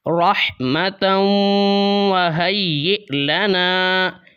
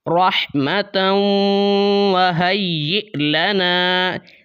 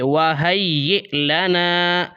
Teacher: یا کے بعد حمزہ ہے، آپ یا کو حمزہ کے ساتھ ملائیں گے۔ رحمتاً وہیئ لنا، جھٹکا لگا کے پڑھیں گے، وہیئ لنا۔